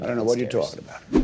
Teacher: I don't know becomes I don't know. Then we have a stop T at the end of what.